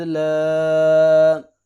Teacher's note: ولا انا عابد ما عبدتم، واو زبر وا، لام زبر الف مد لا، 3 الف کے برابر اس کو لمبا کریں گے